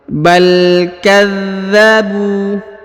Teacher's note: Huruf za ditahan dan ditekan ya karena terdapat tanda tasdid.